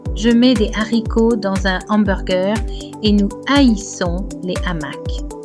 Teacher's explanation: The H is aspirated. Although we cannot hear any aspiration, we do not make any liaison. Each word sounds separately. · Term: aspirated H